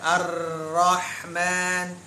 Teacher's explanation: tertahan nafasnya ya nafasnya tertahan kemudian dia punya sifat tambahan takdir bergetar tapi bergetarnya nggak boleh banyak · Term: huruf ro